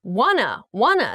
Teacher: Want to becomes wanna in the kind of contracted form in speaking.